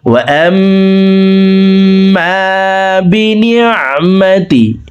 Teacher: ওয়াজিব গুন্না 3 সেকেন্ড পরিমাণ গুন্না করে ধরে রেখে পড়ব